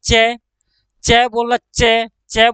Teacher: हमारी जीभ दांतों से ठीक थोड़ा सा ऊपर वाले हिस्से को छू रही है। च बोलना, च, च बोलना, च, च बोला तो जीभ ऊपर वाले हिस्से को छू रही है।